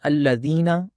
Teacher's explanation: اس طرح ایک اور غلطی ہم پڑھتے ہیں الذین، زال کے ساتھ. زال جو ہے اس کا مخرج زبان کی نوک سامنے دانتوں کے سروں سے لگا کر جو ہے وہ ادا ہوتا ہے، زال نرمی کے ساتھ، لیکن ہم اس کو پڑھ دیتے ہیں الذین، زا کے ساتھ ہم اس کو پڑھتے ہیں.